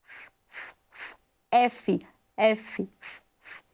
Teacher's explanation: é uma consoante lábio-dental